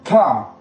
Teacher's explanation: ujung lidah ketemu dengan gigi atas, tetapi ada suara keluarnya seperti ngabab